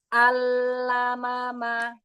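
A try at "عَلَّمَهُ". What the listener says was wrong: Lebarin lam. Allamama. Lebih cepat lagi, jangan terlalu lama nahan lam sukunnya.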